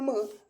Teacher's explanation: म जेव्हा आपण म्हणतो तेव्हा मित्रांनो बघा आपले जे ओठ आहेत मित्रांनो एकमेकांना टच करतात, एकमेकांना लागतात, म्हणून मित्रांनो हा जो वर्ण आहे हा बघा जी की ओष्ठ्य वर्ण जे की क्रमांक या ठिकाणी आपल्या प्रश्नाचं करेक्ट आन्सर होणार आहे.